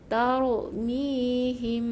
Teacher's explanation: rapatkan bibir dulu baru buka. Dua harakat dengung, jangan lupa.